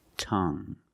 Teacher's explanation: You have only the nasal sound. There's no G.